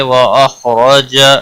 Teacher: خا حروف مستعلیہ میں سے پر پڑا جائے گا، اس کو ہلانا نہیں، اور زبر کی وجہ سے پر پڑا جائے گا